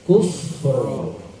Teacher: Tinggal mentakrirkan huruf ro-nya, menggetarkan huruf ro-nya, sekaligus memberikan hak tawasudnya.